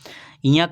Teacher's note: ञ का उच्चारण तालु के साथ नाक से होगा। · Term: नासिक व्यंजन